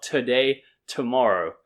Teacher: and then the stress is on day